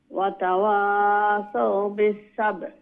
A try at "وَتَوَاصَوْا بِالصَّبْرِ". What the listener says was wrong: صبر صادره আর একটু মানে মোটা করে উচ্চারণ করবা وتواصوا জি খোকা